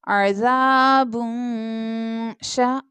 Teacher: तनवीन के बाद नेक्स्ट लेटर शीन है जो कि इख्फा लेटर है, सो हमें यहाँ पर गुन्ना करके पढ़ना है, यानी यहाँ पर हम इख्फा करेंगे।